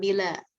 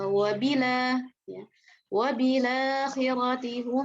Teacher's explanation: Memindahkan harokat hamzah nih, harokat hamzahnya dipindahkan ke huruf yang sebelumnya huruf lam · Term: naql